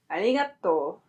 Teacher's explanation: Notice that the ‘r’ sounds kind of like an ‘l’. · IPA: aɾjiŋato